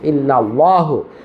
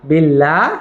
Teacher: আল্লাহ শব্দের তাসদীদের পূর্বে জের হলে আল্লাহ শব্দের লাম হরফকে পাতলা করে লা পড়তে হয়।